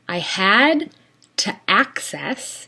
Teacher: using a glottal stop, to access the hard drive